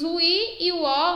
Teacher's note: encontro de duas vogais na mesma palavra mas em sílabas diferentes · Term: hiato